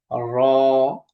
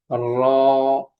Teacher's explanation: জিহ্বার আগার পিঠ তার বরাবর উপরে তালের সঙ্গে লাগিয়ে উচ্চারিত হয় র